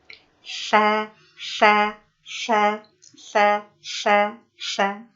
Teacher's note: Diposisikan ujung lisannya ke ujung gigi seri yang atas, sehingga terasa keluar sedikit ujung lisannya. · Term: huruf tha